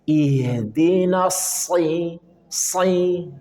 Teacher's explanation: Sad dia punya sifat tafkhim, tebal. Dan sofir, desis. Maka tetap pangkal lidah naik.